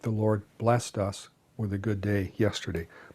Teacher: We tend to use the one syllable pronunciation blessed when we're using it as a verb